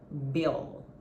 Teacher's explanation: é um L de verdade, que você tem que pronunciar tocando a sua linguinha lá nos dentes de cima. You're gonna touch your upper teeth with your tongue. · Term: true L